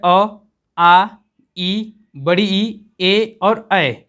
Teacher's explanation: वो है अ, आ, ई, बड़ी ई, ए और ऐ। जब आप इन 6 वर्डों का उच्चारण करते हैं तो आपकी मुख की जो ओठ की आकृति है वो क्या है? गोल नहीं होती है। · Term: अवृतमुखी